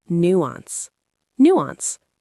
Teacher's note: Two syllables, stress on the first.